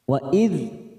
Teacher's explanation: dal sukun kita tahan jangan sampai memantul